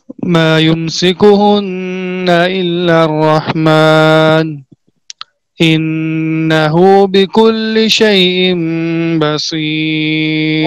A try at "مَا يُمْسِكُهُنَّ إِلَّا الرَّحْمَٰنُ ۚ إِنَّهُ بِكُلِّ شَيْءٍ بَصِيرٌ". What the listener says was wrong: بعد میں صفت سفیر اور استعلاء اور اطباق دونوں پیدا کرو. یہ آپ نے سین پڑھا ہے، صاد نہیں پڑھا.